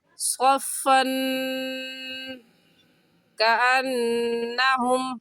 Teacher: سبیل ہی صفن، صفن میں تنوین کے بعد حروف حلقی میں سے کوئی لفظ نہیں ہے تو اس تنوین پر ہم غنہ کریں گے